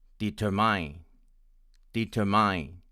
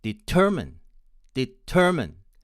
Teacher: i and my american friends will pronounce it as determine determined with stress on the second syllable and with the last vowel of schwa